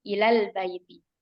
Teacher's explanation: Maka di sini hukumnya dihadzaf atau dibuang. Jadi nggak ilal, nggak dipanjangin lamnya. Ilal, langsung masuk ke lam sukun di kata al-bait ya.